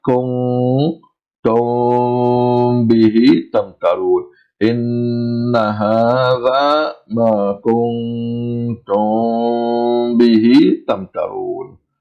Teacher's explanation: We pronounce the Meem sound halfway, and we stretch the Meem sound approximately 2 times its original length. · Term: Ikhfa'ul Meemus Saakinah